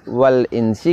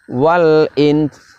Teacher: dan dengungkan nun sukun nya bersamaan dengan itu kita juga tampakkan sifatnya huruf Sin diantaranya Hames